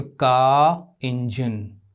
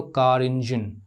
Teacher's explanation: लेकिन अगर मैं इसे साथ में बोलूं, साथ-साथ बोलूं, "कार इंजन" (कार इंजन), तो हम R का उच्चारण "कार इंजन" करेंगे। यह दो शब्दों को आपस में जोड़ना है, आप उन्हें जोड़ते हैं, इसलिए आखिरी 'आर' का हम उच्चारण करेंगे। अगले शब्द में स्वर ध्वनि का होना आवश्यक नहीं है।